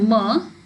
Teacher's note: released with a puff of air per when producing the mer the air is released through the nasal cavity